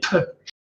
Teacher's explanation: vous réunissez vos deux lèvres avec là aussi un son sourd, c'est-à-dire sans mettre la gorge, c'est Pe. Hein.